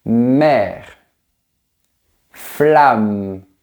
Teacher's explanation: Les lèvres sont collées et l'air sort par le nez.